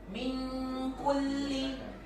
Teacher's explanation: dibaca samar ditahan dengungnya · Ada dengung samarnya minku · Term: Ikhfa hakiki, ikhfa